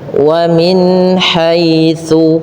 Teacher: menyempurnakan kasrah pada huruf mim agar terdengar dengan i-nya sempurna. wamin haitsu.